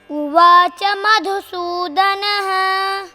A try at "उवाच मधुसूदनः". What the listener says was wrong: उत्तमम्.